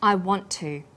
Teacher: the final TT sound in want is held slightly longer on the tongue then to is pronounced the T sound is pronounced only once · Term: consonant plus same consonant linking